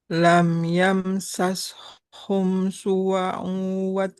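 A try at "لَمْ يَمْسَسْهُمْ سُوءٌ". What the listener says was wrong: suwa'u su'u. Jadi ini sin domah ketemu wawu. su'u Su'u hamzahnya kan tanwin domah ya.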